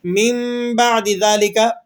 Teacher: یہاں پر ہم اقلاب کر رہے ہیں، چینجنگ کر رہے ہیں کہ نون ساکن کی آواز کو ہم نے میم کی آواز سے چینج کر دیا